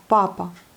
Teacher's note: Vous voyez, c'est accentué sur la première syllabe. Donc papa. Non pas papa, comme en français, mais papa.